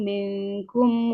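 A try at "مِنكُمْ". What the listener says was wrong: Minkum. nun sukun ketemu kaf itu beneran kayak yang di bahasa Indonesia. Ming kayak kita ngomong gerbang, terbang kan ada engnya ya. Mingkum seperti itu. Jadi bukan milkum.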